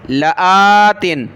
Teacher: سورۃ العنکبوت کی آیت نمبر 5 میں یہ لفظ ہے لآتن، لام زبر لا، حمزہ کھڑا زبر آ، لا، حمزہ کو کھینچیں گے، لام کو نہیں، لا، تا دو زیر تن، لآتن، جب رکیں گے وقف کریں گے تو لآت، لآت۔